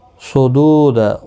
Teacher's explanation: صاد مستعلیہ ہے پر پڑھا جائے گا دو واو مدہ ہے ایک الف کی مقدار کے برابر کھینچ کر پڑھیں گے